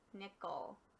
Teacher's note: with the E here, that's a schwa because it doesn't quite sound like an E or an eh